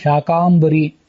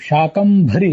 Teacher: ಶಾಕ ಅಲ್ಪ ಪ್ರಾಣ, ಭರಿ ಅಂತ ಮಹಾಪ್ರಾಣ